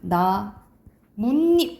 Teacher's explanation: 나뭇잎 이렇게 발음 나잖아, 그치? 그래서 나무 플러스 잎인데 나뭇잎 니은이 덧난단 말이지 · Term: 사이시옷 현상